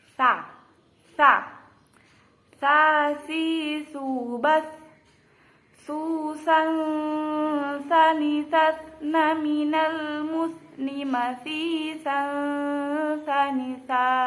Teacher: ujung lidah dan ujung dua gigi seri pertama atas · pengucapan lafadz sa, yaitu lidah renggang dari ujung gigi depan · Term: huruf lisawiyah, huruf sa